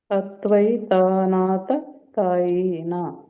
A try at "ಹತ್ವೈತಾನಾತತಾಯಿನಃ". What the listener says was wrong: ತಾಯಿನಃ ಯಾಕೆ ಒಂದ್ ಮಾಡಿದ್ರೆ ಒಂದ್ ಬಿಡ್ತೀರಾ, ಉಳಿದೆಲ್ಲ ಸರಿ ಹೇಳಿದ್ರಿ. ಗ್ಯಾಪ್ ಕೊಡಂಗಿಲ್ಲ ತ ಆದ್ಮೇಲೆ. ಅದ್ವೈತಾನಾತತಾಯಿನಃ.